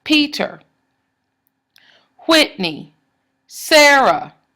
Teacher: The emphasis is on the first syllable. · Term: trochees